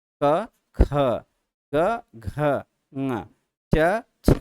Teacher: इन्होंने कहा कि जब हम पहला तीसरा चौथा वर्ड बोलते हैं तो कम वायु बाहर नहीं, अल्प प्राण होता है, वायु कम बाहर निकलती है। लेकिन जब हम दूसरे चौथे वर्ड को बोलते हैं तो ज़्यादा वायु बाहर निकलता है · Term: महाप्राण